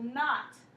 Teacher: you just hear the n you don't hear the k